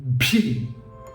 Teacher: uniform uniform এরপরের alphabet ভি ভি ভি টা ওই একই রকম দুটো ঠোঁট প্রথমে জুড়ে থাকবে লিপস্টিক মাখানোর মতো তারপরে হাওয়া বেরিয়ে আসবে